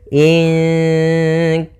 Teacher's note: Maka ketika ada nun mati atau huruf yang dia berharokat tanwin, an, in, un bertemu dengan tadi 15, maka kita namakan dengan ikhfa. Ikhfa itu membaca di antara izhar dan membaca di antara idgham, sehingga kita samarkan saja nunnya kepada makhraj daripada kaf. Maka bukan ingka, tapi dia ingka, langsung ke huruf kafnya.